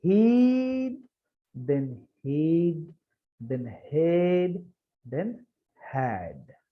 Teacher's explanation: So our shape of mouth is getting from closed to half open to completely open